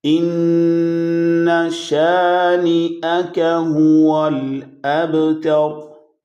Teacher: نون کی آواز کو لمبا نہیں کرنا، غنہ اس پہ ہوگا کیونکہ وہاں پہ شد سائن ہے، اور شد کی وجہ سے نون مشدد ہو تو اس پہ لازم غنہ ہوتا ہے، لیکن اس سے لمبا نہیں کیا جائے گا۔